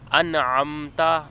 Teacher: انعمت، یہاں نون کے اوپر جزم ہے اور اس کے بعد عین حروف حلقی آ گیا تو یہاں پر گنہ نہیں کریں گے، نہ ہی حرف لمبا کر کے پڑھا جائے گا، بلکہ نون کی آواز واضح نکلے گی اور اس کے مخرج پر جائیں گے، یعنی زبان کی نوک مسوڑوں پر لگے گی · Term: اظہار